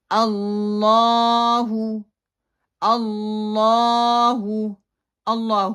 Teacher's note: اللہ کی جو شد ہے اس کو موٹا پڑھا جائے گا، لام کو موٹا پڑھا جائے گا، اور اللہ کو 2 کاؤنٹ لمبا کیا جائے گا، اور ہا کی جو ہے پیش اس کو مجہول نہیں کیا جائے گا۔ · اللہ ہو جو ہے لام کی الف کے جو ہے شد اس کو چھوڑنا بھی نہیں ہے، اور ہا کی جو پیش ہے اس کو موٹا کر کے بھی نہیں پڑھنا، پھیلا کے بھی نہیں پڑھنا